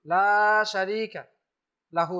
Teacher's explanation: লামের সাথে আলিফ আছে, এখানে এক আলিফ টান দিতেই হবে।